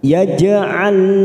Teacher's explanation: ada huruf jim sukun qalqalah sugro, kita pantulkan